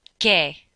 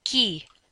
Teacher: q u e has no w sound and just like gui qui has no w sound